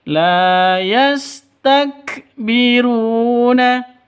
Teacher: la panjang dua ketukan karena ada alif diawali dengan fathah mad asli